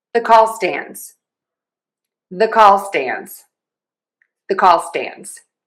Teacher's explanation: I'm starting with the least stressed the I get a little more stress on call and then the most on stands. So you might hear a little bit of like an uptick there. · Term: primary stress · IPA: /ðə kɔl stændz/